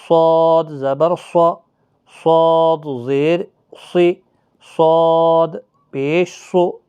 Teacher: یعنی مستعلیہ کا حرف ہے، موٹا پڑھا جائے گا